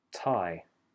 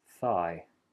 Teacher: then the next two are unvoiced tie thigh really focus on moving your tongue from behind the top teeth for the T to actually on the top teeth for the th and of course the sudden release for the T the gradual